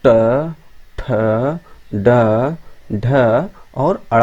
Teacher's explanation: मूर्धन की बात करें तो यानी मूर्धा, मुंह के भीतर की ऊपरी छत का अगला भाग से इनका उच्चारण स्थान होता है